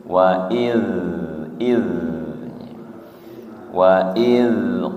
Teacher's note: zal sukun ujung lidah menyentuh ujung gigi seri atas nggih. Kemudian sifatnya rokhah, tidak mantul